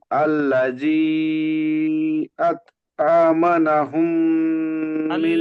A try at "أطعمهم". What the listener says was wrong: আতআমাহুম, ওখানে নুন নেই, আমা না হয়ে যাচ্ছে। আতআমাহুম, আতআমাহুম।